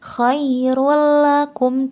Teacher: membacanya dengan memasukkan tanwin ke dalam huruf lam tanpa dengung khoirullakum tidak boleh dengung tidak ditahan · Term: idgham bilagunnah